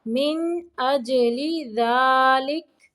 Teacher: من نون کو ظاہر کرنا ہے، اج جیم کو قلقلہ کرنا ہے